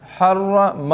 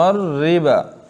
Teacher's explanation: حرم میں را پر اور ربا میں را باریک